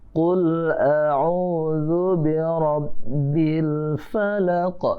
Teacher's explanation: di ujungnya ada qalqalah kubra, qalqalah yang besar ya